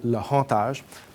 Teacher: on prononce tous les H aspirés en Louisiane